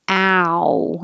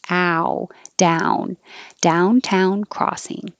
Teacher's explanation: your jaw gets higher and your lips get round